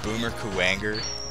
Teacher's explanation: Emphasis on the middle syllable of the last name.